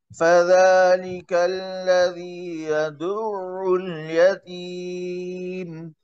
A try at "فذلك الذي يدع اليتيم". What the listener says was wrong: जी, इसको जरा हाईलाइट कर ले। जी, तो आइन में जरा जमा और सख्ती पैदा करे। फज़ालिक अल्लज़ी यदुल यतीम।